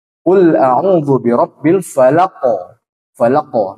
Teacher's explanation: ujung lidah ya Nah sekarang di Pangkal lidah untuk huruf q pangkal lidah bertemu dengan langit-langit yang lunak